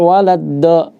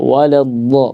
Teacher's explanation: Ya, kalau dari segi suara mungkin mirip, tapi beda dari makhrajnya. Kalau dal itu dari ujung lidah. Sedangkan kalau dot itu dari sisi lidah.